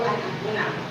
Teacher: An-akuna menjadi contoh ishar karena adanya nun sukun bertemu alif. Maka kita harus membacanya dengan jelas dan tanpa disertai dengung. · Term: izhar